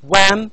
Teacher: Definitely it is a voiced sound because it is one of the nasals.